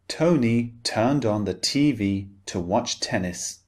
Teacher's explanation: the T, the unvoiced sound in British English is always very distinct. It's very clearly pronounced.